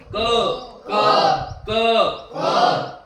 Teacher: म्हणा बरं क क कंठातून येतोय ना क क क इथं क म्हणत असताना टाळूला जीभ लागत नाही दाताला जीभ लागत नाही तोंड उघडं राहतं असं थोडं आणि इथून आवाज येतो पा क इथं बोट लावून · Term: कंठस्थानाची वर्ण